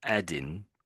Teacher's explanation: to get the N sound, I'm using the front of my tongue at the front of my mouth